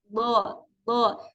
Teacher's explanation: makhraj huruf d itu ada di tepi lidah ya lidah yang bagian samping sini bisa kanan Bisa kiri dengan di geraham yang atas · ujung lidahnya itu akan menyentuh pangkal gigi seri bagian atas